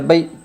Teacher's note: یائلین کو نرم آواز کے ساتھ جلدی اور معروف پڑھے۔